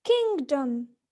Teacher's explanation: A in kingdom is a mid-central vowel. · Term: central vowels